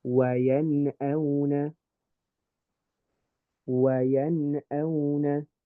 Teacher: I'm going to make this Nun sound nice and clear, but I'm not going to do the Ghunnah.